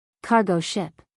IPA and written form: ˈkɑːrɡoʊ ʃɪp (cargo ship)